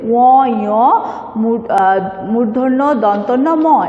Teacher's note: ও, ঞ, মূর্ধন্য, দন্তন্য, ম এগুলো সাধারণত নাক দিয়ে উচ্চারণ হয় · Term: নাসিক্য ধ্বনি